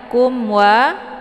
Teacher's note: itu mim sukun bertemu dengan wau ini dinamakan dengan izhar syafawi jadi mimnya dibunyikan secara jelas